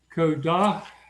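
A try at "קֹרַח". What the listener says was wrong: Wait, Korach. See, it doesn't have the tail to make it a duh, right?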